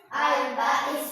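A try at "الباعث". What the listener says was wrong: Bukan Al-Ba'ith ya. Ada titiknya ini, ada komanya. Berarti ada ditahan. Al-Ba'ith. Bukan Al-Ba'is. Ba'is beda. Masa Allah Ba'is kan tidak mungkin. Al-Ba'ith ya.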